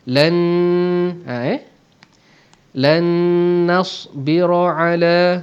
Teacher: nun mati bertemu dengan nun, hukum idgham ma'al gunnah, maka akan kita dengungkan dengan dengung dua harakat. Lan nasbira ala, ra tebal kerana ra berbaris atas.